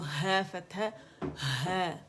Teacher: ہا کہاں سے ادا ہو رہا ہے اقصی الحلق سے ادا ہو رہا ہے